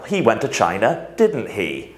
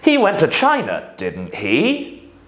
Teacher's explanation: If we use a falling intonation, we are asking for confirmation. · But if we use a rising intonation, what we're doing is we're actually asking a question.